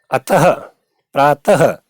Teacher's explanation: विसर्ग का उच्चारण हा की तरह झटके से होता है, जैसे ह, वैसे अतः, प्रातः, ऐसे विसर्ग का उच्चारण किया जाता है, जैसे अतः, प्रातः आदि ऐसे प्रयोग हो गया।